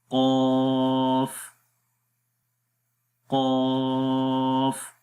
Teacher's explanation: قوف کا جو مخرج ہے وہ زبان کی جڑ جب تالو کے نرم حصے پر لگائیں گے تو اس وقت قوف ادا ہوتا ہے۔ اگر آپ اس امیج کے اندر دیکھیں تو یہ زبان کی جڑ ہے، تو یہ زبان کی جڑ اوپر تالو کے نرم حصے کے اوپر لگ رہی ہے، تو یہاں سے قوف ادا ہوگا۔